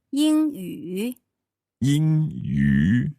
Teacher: So that's a first tone and then a third tone.